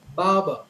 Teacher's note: a typical native speaker when they pronounce this word they would say Baba for the are in the first syllable and the are in the second syllable both are silent